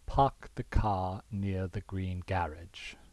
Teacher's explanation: In a non-rhotic or an r-less dialect, such as standard British English, it might sound like this, transcribed here, or from my fake British pronunciation, park the car near the green garage. Notice that not every r is dropped, right? It's not dropped in green or in garage or garage, right? Those r's are kept.